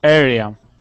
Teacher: we want to say area with the accent at the very beginning